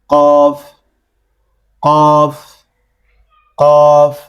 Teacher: জিহ্বার গোড়া তার উপরের তালুর সঙ্গে লাগায়া কফ